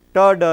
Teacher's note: ta, da is what you call alveolar